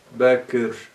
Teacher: gizli bir kesre okunuyor. Yani, iki sakinden İkincinin telaffuzu ancak birinci sakinin hafif bir kesresiyle oluşuyor, olabilir.